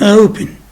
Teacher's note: So if the second syllable is weak, so the first syllable is stressed, as in open. So the first syllable is stressed because the second syllable is weak.